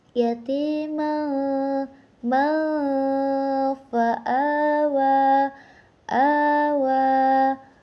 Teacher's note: bertemu dengan salah satu huruf ikhfa yaitu fa maka dibacanya itu dengan dengung atau samar-samar